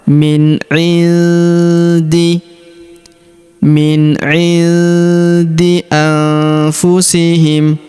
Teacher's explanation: Huruf nun sukun bertemu huruf fu, maka nun sukunnya melebur ke huruf fu. Kita baca dengung dan samar ya